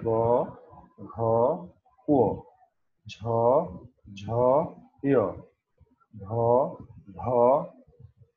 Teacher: ঘোষ। যে সকল ধ্বনিগুলি উচ্চারণ করার সময় স্বরতন্ত্রী কম্পিত হয় সেগুলোকে বলা হয় ঘোষ ধ্বনি।